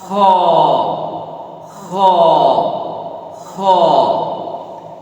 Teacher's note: খর উচ্চারণের বেলায় যেন খয়ের সাউন্ডটা মোটাটে হয়, গোল হয়